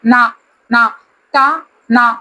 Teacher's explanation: நாவின் நுனி மேல்வாய் பல்லின் அடிப்பகுதியை தொடுவதால் நகரம் பிறக்கிறது